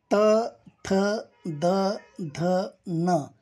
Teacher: या वर्णांचा उच्चार स्थान दात हे आहे